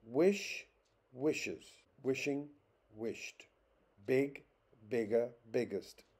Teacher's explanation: in every case the stress is on the first syllable